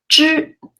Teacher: When you pronounce 知, the tip of your tongue touches the roof of your mouth.